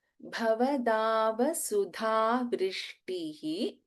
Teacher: number 143 ಭವದಾವ ಸುಧಾ ವೃಷ್ಟಿಹಿ ದ first letter ಭ ಇಸ್ ಮಹಾಪ್ರಾಣ again ಇನ್ ಸುಧ ಧ ಇಸ್ ಮಹಾಪ್ರಾಣ